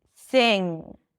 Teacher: So, it's not sing, it's sing. And then you don't need to add the G sound to indicate that there is a G sound. That NG sound is enough.